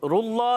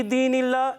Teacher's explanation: اللہ کے لام کو باریک کریں گے. کیوں باریک پڑھیں گے, کیونکہ اللہ کے لام سے پہلے زیر آ گئی